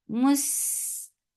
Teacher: Seen is light and it has rakhawa and safir.